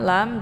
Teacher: am lam juga dibaca jelas karena mim sukun bertemu dengan huruf lam adalah izhar syafawi